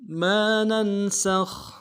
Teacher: ما ننسخ من آية أو ننسها نأت بخير منها أو مثلها ما ننسخ، میم کے ساتھ الف مدہ ہے، ایک الف میں کھینچیں گے، نون کو نون کے ساتھ ملانا ہے، نون ساکن غنہ کریں گے